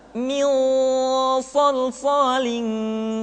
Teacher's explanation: ketemu dengan sh suara menebal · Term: ikhfa